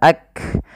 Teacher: Kaf memiliki sifat salah satunya sifat syiddah yaitu suara kita tertahan ak kemudian ada nafas yang dikeluarkan ketika melafalkannya yang di mana